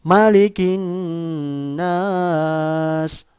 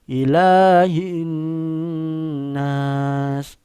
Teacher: Semuanya pakai dengung, ya, mendengung, ya, nunnya bertasydid.